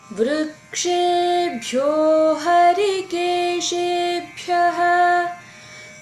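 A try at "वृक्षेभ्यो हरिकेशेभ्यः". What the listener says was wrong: The ksha has to be pronounced more as a little more force aspiration because it is ka and the sha becomes a ksha. So when you say Vrukshebhyo Harikeshebhyaha.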